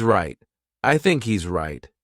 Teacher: Do you notice too at the end of the word right? There's no T sound.